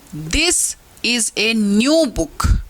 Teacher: The words this, new and book are stressed but 2 words is and a are unstressed. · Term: सेंटेंस स्ट्रेस